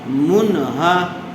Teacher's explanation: نون ساکن کے بعد حروف حلقی میں سے ہا آئی ہوئی ہے، اس لیے بغیر غننے کے جلد اظہار کر کے پڑھیں گے